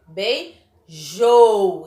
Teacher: Então, a última sílaba dela é a mais forte.